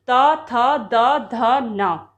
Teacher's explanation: त वर्ग जो कि दांत से बोले जाते हैं